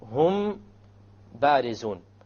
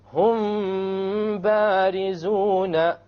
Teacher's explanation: You have a meme followed by a ba. You make the ikhfa and you have a ghunna. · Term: ikhfa shafawi